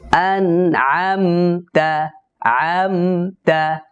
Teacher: এখানে সাকিনের পরে তা আসছে তবুও আদা আলিফ পরিমাণ গুনা হবে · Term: ফিতরতি গুন্না